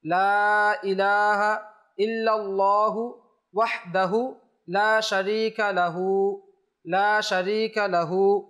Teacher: ইলাহা ইল্লাল্লাহু ওয়াহদাহু লা শারীকা লাহু ওয়াহদাহুর মধ্যে যে হা রয়েছে ওয়াহদাহু এই হুটা টান হবে না কিন্তু এরপরে যে রয়েছে লা শারীকা লাহু এখানে 1 আলিফ টান হবে